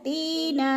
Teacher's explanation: ती पे या मद्दा है, या साकिन से पहले ता के नीचे ज़ेर है, तो या मद्दा को एक अलिफ के बराबर खींच कर पढ़ना है